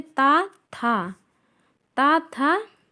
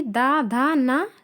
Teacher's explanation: ता वर्ग में ता, था, अघोष है, जबकि दा, धा, ना सघोष है